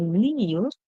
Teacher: Remember, kneel, the K silent, so you do not hear the K.